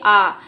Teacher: विवृत देखिए, आ बोल के आप देखिए, आ, इसमें हमारा मुख द्वार पूरा खुल जाता है और जीवा की ओर जाती है। जीवा हमारी पीछे की ओर जाती है और मुख द्वार पूरा खुल जाता है।